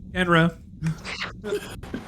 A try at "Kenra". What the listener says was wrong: No D.